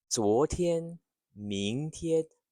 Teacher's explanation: a second tone, then first tone. They rise and then stay level.